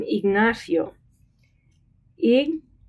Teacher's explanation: one syllable together okay that's what we mean it's not o we don't say IGN o the I and the o just kind of blend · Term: weak vowel